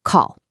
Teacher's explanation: That's a short drum tap with a surprised huh tone.